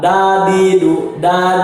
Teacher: Lidah menempel di langit-langit mulut dibanting ke bawah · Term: dal